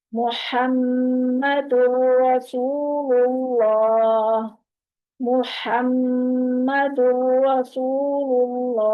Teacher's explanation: मीम मुशद्दद पे 2 हरकत जितना हमने नाक में आवाज को रोकना है।